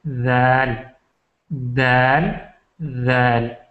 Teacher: ذال کا بھی یہی مخرج ہے کہ زبان کا سرا آگے کے دو دانت یعنی ثنایا علیہ سے ٹکرائے. ذال ذال ذال.